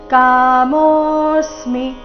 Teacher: ಮೋ ದೀರ್ಘ ಅವಗ್ರಹ ಇದ್ದ ಕಾರಣ ದೀರ್ಘ ಸಮಯ ಹೇಳ್ಬೇಕು